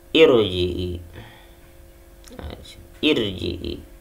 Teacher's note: dia dominan kasroh, jadi ro-nya adalah ro tarkik atau ro tipis, hukumnya tarkik atau ro tipis.